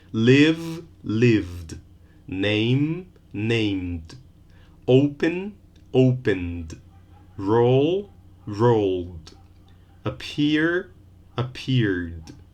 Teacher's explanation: had one syllable bribe in the past still one syllable bribed no extra vowel no extra syllable